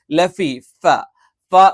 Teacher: മേലെ പല്ലിന്റെ മുൻപല്ലിന്റെ താഴെഭാഗം താഴെ ചുണ്ടിന്റെ പള്ളയിൽ വെച്ചുകൊണ്ടാണ്